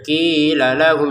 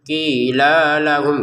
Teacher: Qi dua harakat lanya langsung ke lam berikutnya